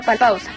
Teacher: Un ejemplo claro de esto es la pausa, la A como vocal abierta y la U como vocal cerrada, es decir, nuestra cavidad bucal se cierra al terminar la pronunciación de la sílaba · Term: diptongo decreciente